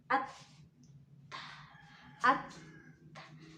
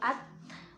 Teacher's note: Berarti huruf ta keluar dari ujung lidah.